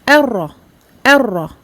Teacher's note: Ra mushaddada. Attention à bien doubler le ra, mais on ne prononce pas du tout le noun ici grisé. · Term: Idgham sans runna